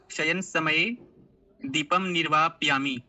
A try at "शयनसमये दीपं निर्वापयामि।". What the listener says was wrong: बहु शोभनम्। ज्ञान विकासः आदर्शः द्वौरपि सम्यक् पठतः।